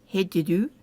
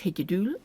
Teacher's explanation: The last vowel is actually shortened and just the L added.